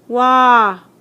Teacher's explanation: all my lips are round the beginning and the end